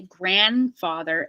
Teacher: you can kill the D on this one and say grandfather